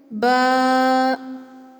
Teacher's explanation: پیارے بچوں، ہونٹ کے دو حصے ہیں، گیلا اور خشک، لیکن ہمیں گیلے حصے سے با پڑھنا ہے۔ بند ہونٹوں کے گیلے حصے سے با ادا ہوتا ہے